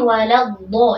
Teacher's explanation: Kemudian waladdo, nah di sini juga sama ya, huruf dhalnya tekanannya ada pada sisi lidah. Kemudian huruf dhad ini tasydid, berarti huruf dhalnya ada 2 huruf, maka jangan terburu-buru ya.